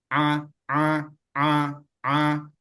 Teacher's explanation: A itu kemarin makhrajnya di ee Tengah tenggorokan jadi A dan dia tidak termasuk huruf tebal dia huruf tipis maka dia di ee senyum · Karena Ain dia keluar dari tengah tenggorokan. Tidak ada hubungannya dengan hidung.